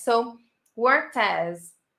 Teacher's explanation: And then we link the T sound with as.